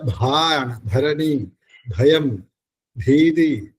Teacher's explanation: ചുണ്ട് വളയാതെ തന്നെ ചുണ്ടിന് നന്നായിട്ട് അടുപ്പിച്ചുകൊണ്ട് തൊണ്ടയിൽ നിന്ന് വരണം ഭ എന്ന് വരും · ഘോഷമാണ് തൊണ്ടയിൽ നിന്ന് വരണം ഭ എന്ന് വരണം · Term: ഭകാരം